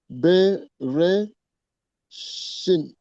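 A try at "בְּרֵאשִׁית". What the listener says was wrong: J'ai pas entendu le T à la fin.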